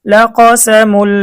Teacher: তানভিন, তানভিনের পরে ইদগামে বেলাগুন্নার হরফ লাম এসেছে, গুন্না ছাড়া মিলিয়ে পড়তে হবে।